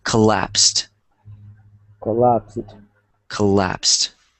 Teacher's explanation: it's pronounced collapsed kind of like there was a t there it has the T sound